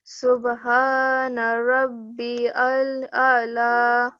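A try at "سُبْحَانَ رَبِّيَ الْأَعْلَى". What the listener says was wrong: This is yal. Okay, ya with a fatha followed by a lam. Subhana rabbiyal a'la.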